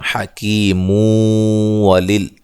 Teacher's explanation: ملانے کی صورت میں یہاں نون تنوین کا ادغام ہوگا مع الغنہ